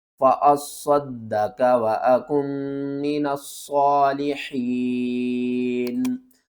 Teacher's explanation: फ़अस्सद, स्वाद को भी 2 बार पढ़ना है, दाल को भी 2 बार पढ़ना है और स्वाद को मोटा करके पढ़ना है। दाल के ऊपर एक बार कलकला करेंगे, दूसरी बार ज़बर के साथ पढ़ेंगे।